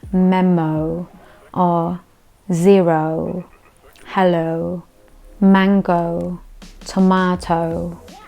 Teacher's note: it is a big round long o instead of a snap short o · you will pronounce it not short, but very long and round O